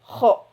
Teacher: K mahrajnya yaitu di ujung tenggorokan dekat pangkal lisan ya.